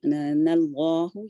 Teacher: اللہ یہاں پہ لام جلالہ ہیوی ہوگا, 2 کاؤنٹ تک جائے گা